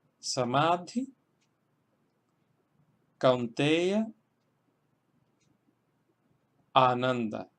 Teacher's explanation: Vemos que en el primer caso, Samadhi, estamos acentuando la segunda sílaba porque tiene una vocal larga